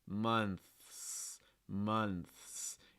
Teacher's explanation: And our last word here with the TH, a tricky sort of cluster here with the TH and then the S, months, months. You need to hear both the TH, that month, and the S, months, months.